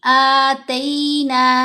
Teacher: ता ती तू की आवाज नहीं बनेगी तई आवाज बनेगी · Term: या लीन